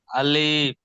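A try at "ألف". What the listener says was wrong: আলিফ টান হবে না, খেয়াল করে পড়বেন। আলিফ।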